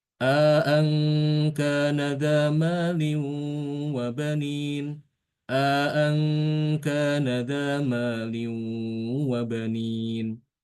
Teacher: Jadi bacaannya kayak menambahkan alif sehingga dibaca dengan mad tabi'i · Ang jangan terlalu panjang, hanya dua harokat saja.